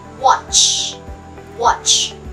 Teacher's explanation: Wala pong vibration sa ating vocal cords para sa consonant na CH.